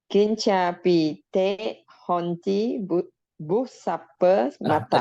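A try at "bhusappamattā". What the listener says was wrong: Again H here. Busappa mata. Bu. Not boo. Not boo. It's busappa mata.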